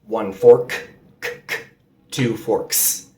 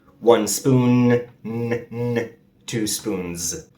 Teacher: Fork becomes forks, and spoon becomes spoons, but the pronunciation differs depending on the final sound of the singular noun. Forks ends in an S sound, while spoons ends in a Z.